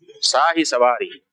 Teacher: इसलिए तालव्य को शाही से हटा करके वहां पर दंत स शुरू में कर देना चाहिए और जो इकार है उसको दीर्घ से ह्रस्व कर देना चाहिए। और इसी तरह से सवारी में जो व में ई है बड़ी, उसको छोटा कर दिया जाए तो शाही सवारी हो जाता है।